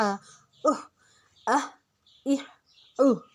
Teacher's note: ہا کو ہم نے حلق سے نکالنا ہے